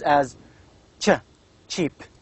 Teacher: There's a t before sh, so it becomes as ch